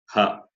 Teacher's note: The first three, sha, sha, sa, they are hard aspirate, and ha is soft aspirate. And the sound comes from the throat. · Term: guttural